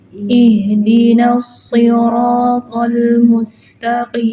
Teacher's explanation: Ihdinas nanya masih tipis ya, dia kan tarkik ya, nun masuk ke shod yang tafkhim. Ini harus hati-hati, bukan Ihdinas nos, naknya udah tebel itu salah.